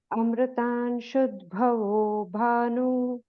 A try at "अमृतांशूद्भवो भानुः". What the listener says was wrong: तत्र अमृतांशूद्भवो भानुः, शू दीर्घादर, and then it is shashabinduhu, not shashibinduhu, it is shashabinduhu.